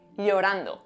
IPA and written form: ʎo.'ran.do (lorando)